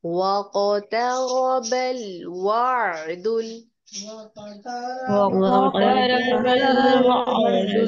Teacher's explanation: काफ के ऊपर कलकला कीजिए, काफ को पुर करके पढ़िए, रॉ पुर होगा।